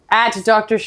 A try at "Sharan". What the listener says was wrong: Sharan With an A, Sharan, not Sharon Stone.